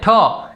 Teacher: તમે જ્યારે આનો ઉચ્ચાર કરજો ક તો એકી સાથે હવા બહાર નીકળશે બ્લાસ્ટ થઈને. એવી રીતે ઠ એમ બોલશો તો પણ આપણા જે શ્વાસ આપણે ઉચ્છ્વાસ બહાર કાઢીએ છીએ તે બ્લાસ્ટ થઈને નીકળે છે, માટે તેને સ્ફોટક વ્યંજનો કહે છે.